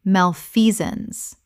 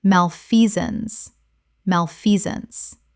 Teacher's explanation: 3 syllables with the stress on the second. The sance collapses to zuns.